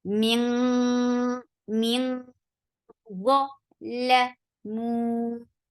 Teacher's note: 4 counts long because this is mad munfasil